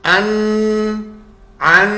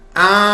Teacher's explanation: अन अन नून की आवाज आ रही है आ नून की आवाज नहीं आ रही